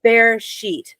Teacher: The accent is on the first syllable.